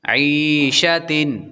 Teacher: عین کے بعد یا حروف مدہ ہے، تو 1 الف کے برابر لمبا کریں گے